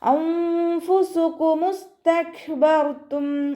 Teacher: കാഫ് സുക്കൂനാണ്, അവിടെയും നമ്മൾ half സുക്കൂന് കൊടുക്കാൻ ശ്രദ്ധിക്കുക. കാഫിന് സുക്കൂനാവുമ്പോൾ കുറച്ച് എയർ പുറത്തോട്ട് പോണ സൗണ്ടിൽ വേണം ഉച്ചരിക്കാൻ കേട്ടോ